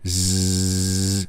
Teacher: That's the same thing as an S with the voice on.